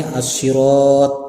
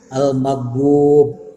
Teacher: Contoh bahwa yang mad tobi itu cirinya ada alif, ada waw dan ada ya. Contoh di sini as-sirat panjang dengan alif, al-maghdub dipanjangkan dengan waw sukun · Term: mad asli